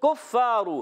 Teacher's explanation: कुफ्फारू काफ को बारीक रखना है और रा को पढ़ेंगे पुर, फा की अदाई क्लियर करेंगे।